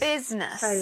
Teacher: We don't pronounce the vowel sound in the middle.